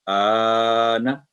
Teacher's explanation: اس کو 4 سے 6 سیکنڈ لمبا کر کے ادا کیا جاتا ہے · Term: بڑی مد